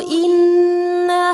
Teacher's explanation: نون مشدد پر غنہ کیا جائے گا